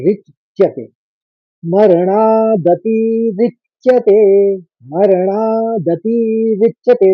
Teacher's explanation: चौथे चरण में एक ही आघात है रौ के ऊपर